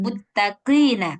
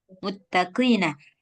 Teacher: Jadi qaf nih walaupun kasrah dia tetap tebal tapi nggak sampai lebay.